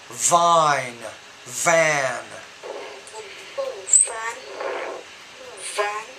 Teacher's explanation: You have to produce the V with more vibration.